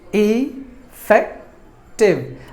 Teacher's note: there are three syllables in this word and we have to stress the second syllable · in this word and we have to stress the second syllable fact should be given more volume than the rest of the syllables